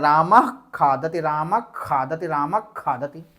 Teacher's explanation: अब ये इसका उच्चारण क्या होगा, खा से पहले आया है आधा अर्ध विसर्ग, तो इस अर्ध विसर्ग को हम आधे खा के रूप में पढ़ेंगे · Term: जिह्वामूली